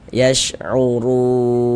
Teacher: Huruf ra memiliki harokat dhammah ini, tanda baca dhammah, maka huruf ra dibaca tabkhim, dibaca tebal